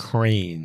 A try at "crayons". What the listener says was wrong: Crayons. Crayon, not cranes. You're missing a vowel. Crayons.